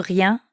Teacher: the french r sound which comes from the back of the throat and em the nasal sound you hear in bien riem okay